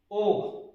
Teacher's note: ओ का उच्चारण स्थल याद रखिएगा कंठ और ओष्ठ से